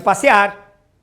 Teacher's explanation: Passear, ó, o ar é que é forte. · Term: oxítona terminada em R